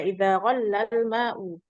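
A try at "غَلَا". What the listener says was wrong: Ghala. Fa'idha ghala yaghli. Baka yabki. Jangan tasdid. Lamnya jangan tasdid, Om. Yang pas itu seperti baka tuh, baka.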